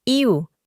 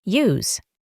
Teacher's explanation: Para pronunciar esta palabra, intentamos poner una i adelante de u, iu. Al final añadimos una z, use.